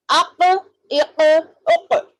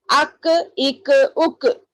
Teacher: قاف تھوڑا منہ میں گونج رہی آواز، مگر کاف میں نہیں گونج رہی